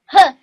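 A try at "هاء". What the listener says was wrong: Say the full letter, ha. It's a soft ha.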